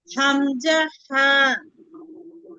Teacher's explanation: জি 1 নম্বর মাখরাজ। হলকের শুরু হইতে হামজা হা।